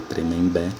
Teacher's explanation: nota que a sílaba tônica é a última e ela termina em E, é uma oxítona terminada em E.